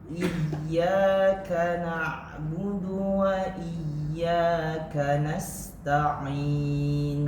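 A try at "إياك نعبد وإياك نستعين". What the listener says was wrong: K-nya jangan terlalu deras. Iyyaka bukan tidak. Desis yang paling kecil huruf K. Iyyaka sedikit saja. Desisnya seakan-akan tidak keluar, ketahan. Tapi dia secara tidak sadar dia keluar sedikit.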